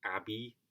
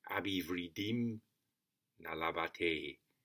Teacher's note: So if I try in Sanskrit, emphasizing the meter, nayaṁ, śrutvā, śakto, ayam, abhivṛddhiṁ, labhate. So it's abhi, 2 short syllables, vriddhiṁ, 2 long syllables